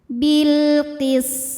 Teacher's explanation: sin punya desis atau sifat sofir, ciri khas dari sin yang tidak dimiliki huruf lain kecuali sin, zai, dan sod. · maka lam sukun kita bunyikan dengan izhar atau jelas